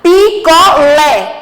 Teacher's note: O lé é a sílaba mais forte. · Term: oxítona